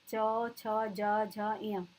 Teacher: तालव्य यानी तालु से बोले जाते हैं